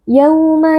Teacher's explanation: wau sukun yang sebelumnya berharakat fathah wau sukun kita baca dengan lunak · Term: Lin